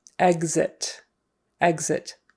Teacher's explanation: word it's not a k s sound it's not exit exit we don't usually say it with a KS um exit we usually say it with more of a gz